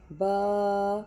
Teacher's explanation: با دونوں ہونٹوں کے تر حصے سے ادا ہوتا ہے۔